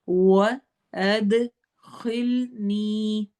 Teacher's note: اد میں دال کی آواز کو ہلانا ہے، ایکو ساؤنڈ ہوگی، اس کو کلکلہ کہتے ہیں